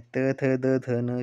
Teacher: त, थ, द, ध न जो है वह आपके यह दंत व्यंजन है